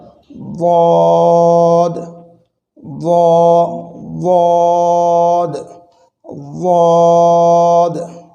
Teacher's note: জিহ্বার গোড়ার কিনারা উপরের মাড়ির দাঁতের গোড়ার সঙ্গে লাগিয়ে এটি উচ্চারণ হয়